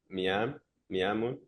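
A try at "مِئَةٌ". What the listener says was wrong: No, okay, so it's a ta. So the dots probably is not showing mi'atun. Mi'atun. Closed tab. Mi'atun. Mi'atun. That's probably a bit clearer there. Mi'atun.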